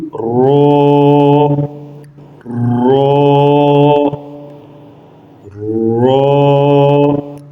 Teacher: زبان کی نوک کی پشت کو اوپر والے دانتوں کے مسوڑوں سے لگا کر موٹی اواز میں پڑھیں گے